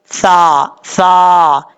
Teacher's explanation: سا کا مخرج ہے زبان کا سیدھا اوپر والے دانتوں کے اندرونی کنارے سے لگے تو سا پڑھا جاتا ہے بغیر سیٹی کے